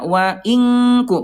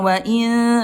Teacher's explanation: Kaf ada di pangkal ayah bunda ya berjauhan tapi tingkat kesamarannya rendah lebih banyak dengungnya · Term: ikhfa ab'ad